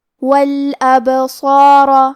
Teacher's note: کلمت الابصار میں یہاں حرف البا پہ جزم ہے، کیونکہ با بھی حروف القلقلہ میں سے ہے تو ہم یہ حرف کو ہلاتے ہوئے یہ کلمہ کو پڑھیں گے۔ والابصار، حرف الصاد کے بعد مد الف ہے، لہذا ہمیں یہ دونوں حرف کو تفخیم سے مطلب بھاری آواز میں پڑھنا ہے